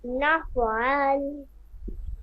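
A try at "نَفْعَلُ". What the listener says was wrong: নাফআলু, এখানে ওয়াকফ চিহ্ন নাই। যজমালা হরফ তাহার ডান দিকের হরকতের সঙ্গে একত্রে একবার পড়া যায়।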